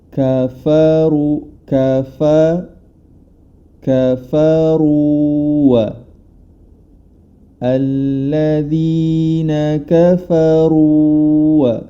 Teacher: Huruf ra berharokat dhammah, maka cara membacanya dengan ditebalkan huruf ra tersebut. Kafaru, dikarenakan huruf ra ini tebal, maka yang perlu diperhatikan huruf setelah dan sesudahnya, yang mana huruf fa dan huruf waw.